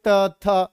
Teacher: दांत में जीभ टच होती है तो ये वर्ण बोलते हैं। बोल के देखो, त थ सब में दांत में टच हो रही होगी।